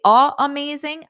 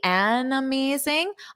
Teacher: if I say a amazing I take a pause if I say an amazing I can combine the sounds together